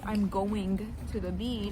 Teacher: Yeah. You kind of drop that G in the continuous tense. Especially if you link it with other words.